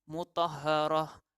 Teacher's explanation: huruf yang kita tekankan iaitu ha. Jadi kita lipat gandakan bunyinya.